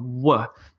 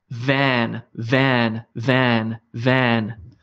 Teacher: there's no rounding of the mouth this is purely bottom lip on top teeth